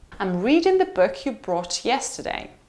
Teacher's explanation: book brought yesterday three stressed words